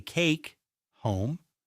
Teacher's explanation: Notice how the vowel sound becomes longer. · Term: Long vowels